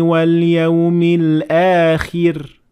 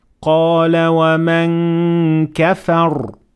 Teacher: The back of the tongue is raised and pushing backwards when it comes to the full mouth, ra. But with the empty mouth, ra, the back of the tongue is lowered and it is in a more relaxed position.